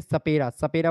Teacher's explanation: सपेरा सपेरा बोल कर के देखिए जीभ आपकी दांत पर टच होगी